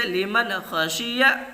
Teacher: نون ساکن کے بعد حروف حلقی کے 6 حرفوں میں سے خا آ رہا، اس لیے نون کی آواز کو ظاہر کر کے بلا غنہ کے جلد پڑھیں گے